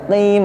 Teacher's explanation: melafalkan qaf bukan seperti pakai k ya, bukan mustaqim tapi mustaqim, ada di tenggorokan bunyinya qim ya, agak ke bawah sedikit. Itu cara melafalkan huruf qafnya ya, qim ya, bukan juga terlalu dibuat-buat ya, bukan mustaqim tapi mustaqim, tipis ya. · Kemudian huruf qaf ya, melafalkan huruf qaf ya, teman-temanku yang insyaallah dirahmati Allah, melafalkan qaf bukan seperti pakai k ya, bukan mustaqim tapi mustaqim, ada di tenggorokan bunyinya qim ya, agak ke bawah sedikit